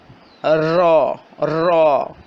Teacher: را زبان کی پشت اور اس کا کنارہ جب اوپر والے دو دانتوں اور ان کے ساتھ والے دانتوں یعنی اوپر والے سامنے والے چار دانتوں کے مسوڑوں سے لگے تو را کی ادائیگی ہوتی ہے